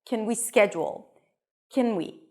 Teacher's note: So the can is reduced here. Can. You don't hear the A really.